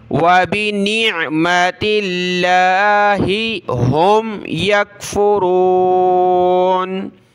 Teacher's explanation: لفظ اللہ کے آخر میں ہا ہے اور آگے ہا ہے، تو اس دونوں ہا کو ظاہر کرنا ہے